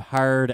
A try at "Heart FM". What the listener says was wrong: That should be Heart FM. Heart FM 101 is enunciate the T. Overpronunciate that.